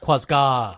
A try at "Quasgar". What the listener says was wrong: There's no R.